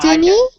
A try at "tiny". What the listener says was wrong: Tiny. So it's not pronounced tinny, it's tiny. Tiny. So it's more like there's two Y's. So you say it like tiny. So it's tiny.